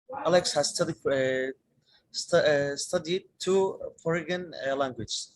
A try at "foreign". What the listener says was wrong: Two foreign. This G is silent. Two foreign languages.